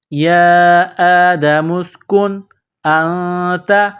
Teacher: تو یہ نون ساکن کے بعد حمزہ ہے تو یہاں آواز ناک میں نہیں چھپائیں گے